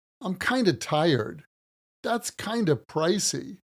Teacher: We usually pronounce kind of as kinda.